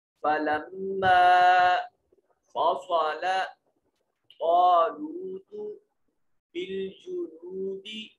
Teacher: میم مشدد ہے، غنہ واجب ہوگا، آواز کو ناک کے نتنوں میں لے جا کر گنگنائیں گے